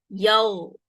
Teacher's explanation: mesti ada lepasan suara dia. Tak boleh mati. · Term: huruf ghain